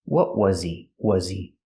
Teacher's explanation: We hear the H in he is silent because it's not a stressed word.